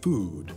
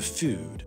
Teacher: What's changed here is where in the mouth the vowel is formed. In food, it's further back, whereas in food, it's further forward, so this is evidence of a shift towards what's called vowel fronting